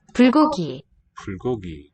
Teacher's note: written with a B, as the word initial sound, it's going to devoice and have slight aspiration, not the heavy kind.